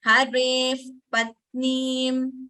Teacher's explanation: The lips should close for Upadmaniya. That is like pa. We use both our lips.